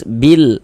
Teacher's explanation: Coba kalau alif lam qamariyah huruf lamnya terbaca jelas bil, maka dikatakan izhar. Izhar artinya jelas ya, atau terang.